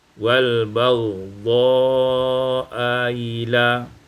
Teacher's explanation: tashil hamzatis tsaniyah, ditashilkan hamzah yang kedua